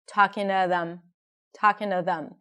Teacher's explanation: so the T of the two becomes like a D sound